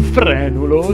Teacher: un frenulo si pronuncia con la e aperta